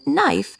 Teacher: In knife, the K is silent, so we only pronounce the N sound.